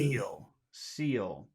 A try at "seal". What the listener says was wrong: Make it longer. Seal. Seal. Seal.